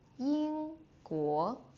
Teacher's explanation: Ying guo, first tone, second tone.